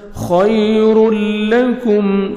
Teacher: تنوین کے بعد حروف یرملون میں سے 6 لیٹرز میں سے لام آ رہے ہیں، یہاں پہ ادغام کرنا ہے بغیر غنہ کے ساتھ